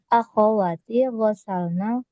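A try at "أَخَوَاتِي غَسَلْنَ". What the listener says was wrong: awalnya panjangin akhawati gitu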